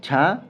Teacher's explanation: या तालव्य ध्वनियां है और अघोष महाप्राण ध्वनि है ठीक है छा अघोष महाप्राण ध्वनि है